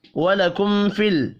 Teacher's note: میم ساکن کے بعد فا ہے، اظہار شفوی ہوگا، غنہ نہیں کرنا